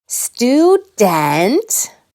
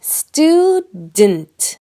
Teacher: the syllable “d’nt” has that almost invisible sound, the schwa